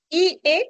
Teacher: central y posteriores y e se consideran anteriores porque se producen se articulan en la parte delantera de la cavidad bucal